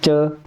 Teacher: च जब हम बोलेंगे तो हमारी जीवा कहाँ टकराती है, ऊपर तालु में टकराती है। बिना ऊपर टकराए च का उच्चारण भी नहीं होगा।